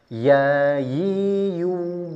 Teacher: Tengah lidah dinaikkan agak sedikit ke depan bukan ke tengah tapi ke depan.